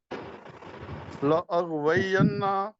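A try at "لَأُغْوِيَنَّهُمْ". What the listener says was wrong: الف کے اوپر پیش پڑھیں لأغوینہم اجمعین ینہم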